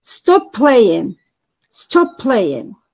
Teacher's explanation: tone is falling at the end of the utterance, which means that the pitch of the voice falls within time. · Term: falling intonation